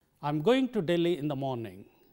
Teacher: the stresses are coming here on going and Delhi and in the morning